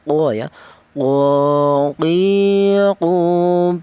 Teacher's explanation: Huruf Qaf ini keluarnya huruf berasal dari pangkal lidah ya. Lidah itu lidah bagian belakang ya.